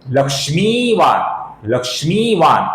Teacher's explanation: ये न अपूर्ण न है, इसका हमें लक्ष्मीवान ऐसा पूर्ण उच्चारण नहीं करना है।